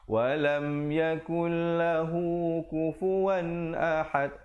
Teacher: Lahu, hu tu 2 harakat aja. Jangan terpanjang.